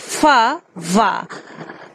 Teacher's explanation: So these are called labiodelta sound because top teeth and lower lip are engaged to produce this sound